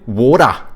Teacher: Australians are kinda in the middle, aren't they? Because they take the soft D's from Americans